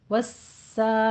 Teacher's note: सीन के ऊपर सीटी की आवाज़ भी आनी चाहिए और तशदीद की आवाज़ भी।